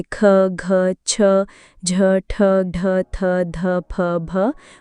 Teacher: महाप्राण ध्वनियों में हकार की ध्वनि स्पष्ट सुनाई देती है।